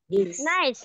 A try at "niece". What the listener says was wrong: niece. Niece. Jangan nice. Kalau nice itu artinya enak. Tapi kalau keponakan perempuan itu niece.